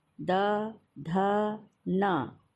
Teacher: तो यानी बोल करके आप देखिए, हर बार आपकी ज़बान जो है वो दांत से टकराएगी, तो इसलिए इनका नाम दंत व्यंजन हो गया।